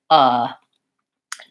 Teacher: my tongue is not high or low or front or back my voice is just on my tongue is relaxed it sounds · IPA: /ʌ/ /ə/